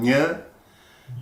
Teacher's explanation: the middle of the tongue touching the upper palate